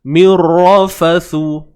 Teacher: Ra tebal selesai sebab dia baris atas.